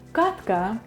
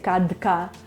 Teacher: And in front of deaf consonants, as in this word katka, it's hard to say kadka, so we say katka, and you hear, instead of a D, you hear a sound T